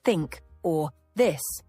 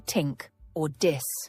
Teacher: the th sound in words like think or this is often replaced with t or d resulting in tink or this.